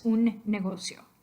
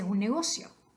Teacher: normally when you speak in rapid, general, natural speech, you would combine those two N sounds into one